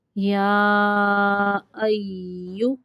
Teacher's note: یا ایو، یہاں پہ یا مشدد ہے تو حمزہ کو یا کے ساتھ ملائیں گے۔ ایو تھوڑی دیر تک ملانا ہے تاکہ یا جو مشدد ہے اس کی ادائیگی ہو جائے